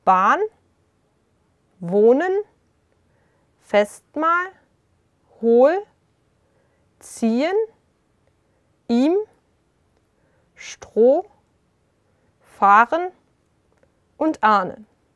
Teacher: Wenn ein H nach einem Vokal kommt, wird der Vokal lang ausgesprochen. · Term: Dehnung-h